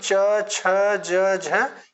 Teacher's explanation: श्वास वायु बाहर निकलती है यानी बोलते समय जो है जब कुछ संघर्ष के साथ वायु बाहर निकलती है तो वह हमारा स्पर्श स्पर्श संघर्षी व्यंजन कहलाता है